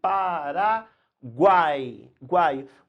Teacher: uma única abertura da boca e vai uma vogal no centro e 2 semivogais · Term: tritongo